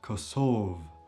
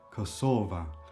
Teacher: If we take nouns first, nouns in the indefinite form are usually pronounced and stressed on the last syllable at the end. If they are in the definite form, so with the definite article in the end, they are pronounced on the penultimate syllable.